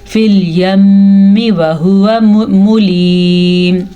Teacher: اب میم پہ غنہ ہوگا کیونکہ میم پہ شد آ گئی ہے. جب کبھی نون کے اوپر شد آ جائے یا میم کے اوپر شد آ جائے تو وہاں پہ غنے کی کیفیت ہوتی ہے، اسے صرف غنہ کہتے ہیں.